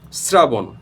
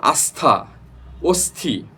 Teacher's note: স এর সাথে যদি র ফলা কিংবা ত অথবা থ যুক্ত থাকে তাহলে কিন্তু সেখানে এস এর উচ্চারণটা আসবে